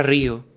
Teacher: La vibración de la R, seguida del hiato, crea una sonoridad que se abre y se estira.